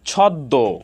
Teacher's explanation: ছদ্ম, এখানে শেষ বর্ণে মফলা যুক্ত হয়েছে, দ এর সাথে মফলা যুক্ত হয়েছে। দ এর সাথে মফলা যুক্ত হওয়ার কারণে দ এর উচ্চারণ দ্বিত্ব হয়েছে এবং শেষের উচ্চারণটি সামান্য নাসিক্য হয়েছে